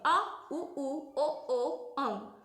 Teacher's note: पश्च स्वर होता है जिसमें हमारी जीभ पीछे टच करते हैं